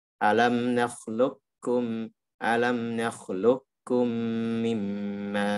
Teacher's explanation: Di sini bisa dua cara baca. Bisa dibaca dengan langsung kaf murni, idgham kamil, atau nakis, artinya qafnya masih disisakan sifat isti'lanya masuk ke kaf.